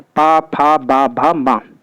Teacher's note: ओष्ठ व्यंजन, जिनका उच्चारण करते समय दोनों ओष्ठ परस्पर स्पर्श करते हैं उन्हें ओष्ठ व्यंजन कहते हैं।